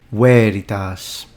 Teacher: this one has two long vowels, veritas. So both E and A are long.